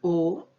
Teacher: de nuestra cavidad bucal pero en esta que en este caso la lengua se contrae es decir se va hacia la parte de atrás casi del velo del paladar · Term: vocal posterior